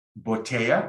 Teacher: For the double L, you can substitute the double L for like a Y, like when you say in English, yesterday, or yes, or yellow. So a lot of the people in the world who speak Spanish make it a Y sound